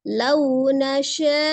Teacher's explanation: Lau nasya'u, lau ada waw sukun fonem u, kemudian tidak dipanjangkan karena madlin di tengah ya, tidak dipanjangkan, lau saja tapi sempurnakan waw sukunnya, monyongkan kedua bibir